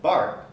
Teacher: In the case of voiced sounds, like the B at the beginning of bark, the voicing actually starts first.